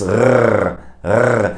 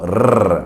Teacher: the German R is different than the English R or than the Spanish R because it comes from the back of the throat. It comes from here somewhere, so it's rrr.